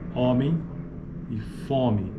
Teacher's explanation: Em certas variantes Paulistas algumas formas como homem e fome são pronunciadas com vogais orais